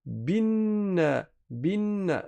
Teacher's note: Le alif de liaison on ne le prononce pas quand on est en plein milieu de la lecture. On le prononce que quand on commence le mot par la lecture.